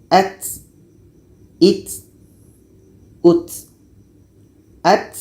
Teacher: Ujung lidah menempel dengan pangkal gigi seri atas.